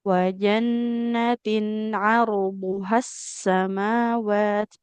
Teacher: H-nya nggak boleh dipanjangkan karena di depannya ada alif lam.